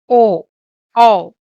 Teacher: कंठोष्ठ्य. जिसका उच्चारण कंठ और ओष्ठ से हो, that means throat and lips, वे कंठोष्ठ्य वर्ण है